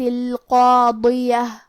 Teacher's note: مد الف اپنے پیچھے والے حرف کا حکم لیتا ہے تفخیم میں اور ترقیق میں، تو کیونکہ اس کے پہلے حرف القاف کا حکم ہے تفخیم تو ہم قاف کو اور مد الف کو دونوں کو موٹی آواز میں پڑھیں گے